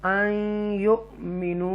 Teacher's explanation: यहाँ पर हमज़ा साकिन है और उसको झटके से पढ़ेंगे, ट्विच करेंगे